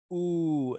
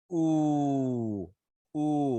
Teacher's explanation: So this sound is high, so that means that my jaw is high. And back, so that means my tongue is going back, and it's tense and round, like you're going to kiss someone.